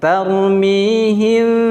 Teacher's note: ketika direnggangkan sedikit bibirnya, tarmihim, dan samarnya 2 harokat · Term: ikhfa syafawi